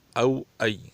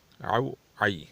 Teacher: او کی حمزے کی جو صفت ہے سخت ہے، عین کی صفت نرم ہے، اس لیے دونوں میں فرق کرنا چاہیے۔